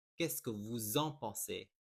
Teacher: Don't forget, there is a liaison here because you have vous, which ends in an S, and the following word starts with a vowel. It will make a Z sound for the liaison.